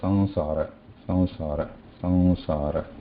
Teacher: When we say Anuswara, there is no touch of throat, tongue anywhere. Just the free air passes, air freely passes through nose, no touch anywhere.